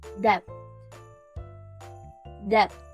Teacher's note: We start with the D sounds like in the word dog, and then we add a short E sounds like in the word bed. Finally, we end it with the T sounds with your tongue touching your front teeth